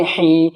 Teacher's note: یا ساکن ہے اور اس سے پہلے ہا ہے، ہا کے نیچے زیر ہے تو یا مد ہوگا یعنی یا کھینچے گا